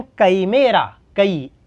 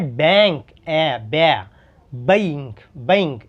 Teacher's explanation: अब मराठी, हिंदी, सिर्फ हिंदी, ये सिर्फ हिंदी। ए का आई, मराठी में सेम ए का ए ही रहेगा, लेकिन हिंदी में ए का अब आई आवाज़ आएंगी।